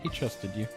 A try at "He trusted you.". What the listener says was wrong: I know you said trusted. It sounded like you said chusted. Chusted.